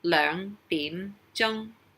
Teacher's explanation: 2, a very low tone · you're going from the bottom, the 2, and then up again to the 點, and then very high for the 鐘. So 2點鐘, just climbing the ladder, okay?